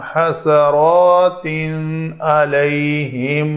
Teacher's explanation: دو زبر والی تنوین ہے، حروف حلقی آ گئے تو اس تنوین کا اظہار کرنا ہے